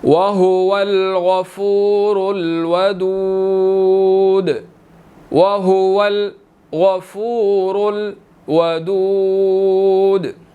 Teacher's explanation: وَهُوَ الْغَفُورُ الْوَدُودُ، وَهُوَ الْغَفُورُ الْوَدُودُ، یہاں پر غائن جو ہے وہ موٹا ہے، اس کو ہم نے موٹا ادا کرنا ہے، ٹھیک ہے۔ را کے اوپر جو ہے وہ پیش ہے، اس لیے را کو موٹا ادا کیا جائے گا